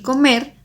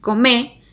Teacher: el paradigma verbal se vuelve más simple con la pérdida de R al final del infinitivo